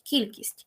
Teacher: с перед м'яким стає м'яким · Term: асиміляція за м'якістю